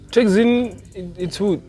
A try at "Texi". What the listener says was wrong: No, Texi, not Tuxi. Not Tuxi,